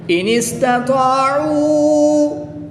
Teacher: تا کو باریک پڑھیں گے۔ طا حرف مستعلیہ میں سے ہے تو اس کو پر یعنی موٹا پڑھیں گے۔ الف سے پہلے طا کے اوپر زبر ہے تو یہاں پر الف مدہ ہوگا۔